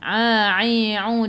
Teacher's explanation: daripada kerongkong, bukan daripada hidung